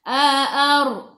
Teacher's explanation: Ra baca dengan tebal sebab sebelum ra baris atas. A'ar, lidah naik ke atas.